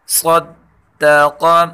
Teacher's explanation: صاد اور قاف دونوں کو پر پڑھیں گے، اور دال کے اوپر تشدید ہے، اس لیے دال کو سختی کے ساتھ پڑھیں گے۔